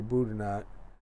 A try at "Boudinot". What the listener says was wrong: I think the T is silent. I think the T is silent.